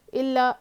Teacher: حمزہ پہ زیر ہے نہیں کھینچیں گے، ای، لام الف زبر لا، الف مدہ جو ہے ایک الف کے برابر کھینچیں گے، اس کے اوپر پھر تشدید ہے، دیکھیے تشدید کو سختی کے ساتھ پڑھنا ہے، ملا کے پڑھنا ہے، اس کو 2 بار پڑھیں گے